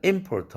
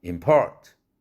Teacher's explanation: 액센트가 명사일 때는 앞에 음절에 액센트가 있고 import 동사일 때는 두 번째 음절에 액센트가 있죠